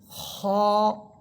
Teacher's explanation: খ, খ এটা মোটা হরফ, মোটা করে আওয়াজটা করবেন। আওয়াজ মোটা হবে এবং উপরের দিকে একটু ধাক্কা দিয়ে পড়বেন।